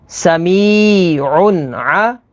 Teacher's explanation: تنوین کے بعد عین ہے، عین حروف حلقی میں سے ہے، تو یہاں پر اظہار ہوگا یعنی غنہ نہیں کریں گے